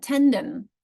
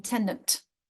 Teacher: they added a t sound at the end of words that ended in a d, like tendon, for example, became tendant.